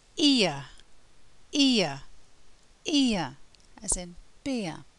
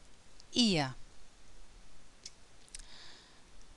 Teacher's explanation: In ear, the mouth starts relatively closed and becomes more open, so the jaw drops. The lips go from spread to rounded, and the tongue moves from the front of the mouth to the middle of the mouth.